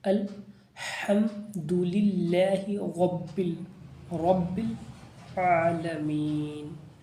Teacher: یہاں پر جلدی پڑھیں گے، ہا کو حرف حلقی ہے، حلق سے ادا کریں گے، اللہ کو، رب کو یہاں پر را کو پر پڑھیں گے، عین کو حلق سے ادا کریں گے